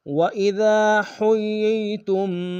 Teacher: اذا کی الف مدہ ہے، ایک انداز میں کھینچیں گے۔ حُيِّ میں ہاں کو یا کے سامنے لیں گے، شد ہے زور دیں گے، یا کو یا کے سامنے لیں گے، یا مدہ ایک انداز میں کھینچیں گے، تا کو میم ساکن سامنے غنہ کریں گے۔